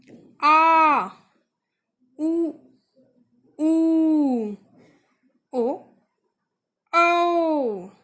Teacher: जीभ का जो हमारा पीछे वाला हिस्सा होता है उससे इन स्वर का उच्चारण किया जाता है